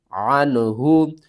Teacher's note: نون ساکن کے بعد حروف حلقی میں سے ہا ہے تو یہاں پر اظہار ہوگا۔